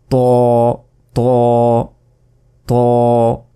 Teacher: জিহ্বার আগা সামনের উপরের 2 দাঁতের গোড়ার সঙ্গে লাগিয়ে ত